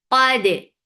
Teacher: Qaf is heavy for fatha upon jaws attached with dal. Dal will get sifa of qalqala. And dal, keep dal light.